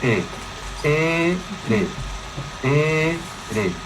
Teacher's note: e e re con vibración de las cuerdas vocales en inglés el sonido r se emite tocando el paladar blando atrás de la zona dura con las orillas de la lengua produciendo vibración de las cuerdas vocales podemos sostener el sonido r manteniendo la lengua en esa posición